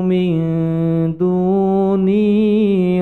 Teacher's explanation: maka bacaannya menjadi samar atau ifa, mendengung samar menuju pada huruf di depannya, yaitu di sini hurufnya dal di depan huruf nun sukun, dipanjangkan 2 ketukan.